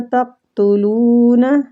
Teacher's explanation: قاف قلقلہ بھی اس پہ کریں گے اور مستعلیہ پر بھی پڑھیں گے